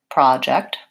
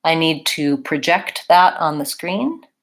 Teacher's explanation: for the noun I have a project I'm working on its first syllable stress project versus for the verb I need to project that on the screen its second syllable stress